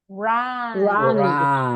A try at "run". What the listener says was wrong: So you need to open your mouth. Run.